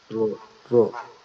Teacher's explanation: রটা হচ্ছে জিহ্বার আগার উল্টা পিঠ উপরের তালুর সঙ্গে লাগবে